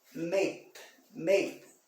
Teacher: Pode ver que esse Ezinho, o E eu quase não pronuncio, não sai da minha boca. E esse Dzinho aqui quase mudo.